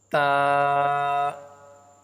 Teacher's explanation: تا کو پڑھنے کا درست طریقہ یہ ہے اپنی زبان کی نوک کو اوپر والے دانتوں کے اندر کے حصے سے ٹچ کر کے پڑھیں گے